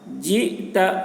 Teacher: حمزہ میں جھٹکا لگے گا